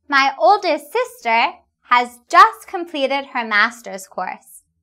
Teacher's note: When saying quickly, we will usually not pronounce /t/.